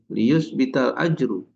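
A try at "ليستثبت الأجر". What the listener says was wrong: nah bukan yus bital, liyas buta seharusnya ya. Liyas butal ajaru wa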